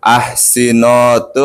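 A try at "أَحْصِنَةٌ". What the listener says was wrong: Nah, bukan nono, enggak ada bahasa Arab. Ahsinatun.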